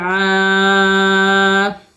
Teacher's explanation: عین الف زبر آ، آ میں الف مدہ ہے، الف خالی سے پہلے زبر ہو، الف مدہ ہوتا ہے، 2 حرکت کھینچ کے پڑھیں گے